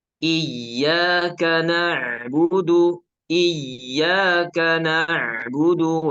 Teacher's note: pengucapan Ain itu keluar dari ee tenggorokan tengah · Ketika ditutup hidungnya, maka tidak akan ada sengau, ya, karena huruf ain itu dari tenggorokan tengah.